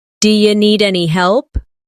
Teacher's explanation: do you sounds like d'ya.